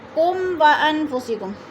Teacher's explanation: میم ساکن کے بعد واو آ گیا ہے تو ادھر اظہار شفوی ہو رہا ہے، غنہ نہیں کریں گے